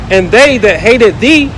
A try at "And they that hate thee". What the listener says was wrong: They that hate thee. It's not hated. hate thee, not hated. You said hated.